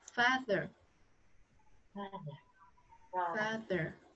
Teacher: Âm cuối lưỡi cong.